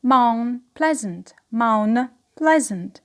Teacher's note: So here the n becomes m, of course, after the consonant elision, after the t elision. So the n becomes m before p sound.